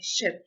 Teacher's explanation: Its place of articulation is when the person retracts his tongue a little back from the alveolar ridge, and there is friction when the air gradually comes out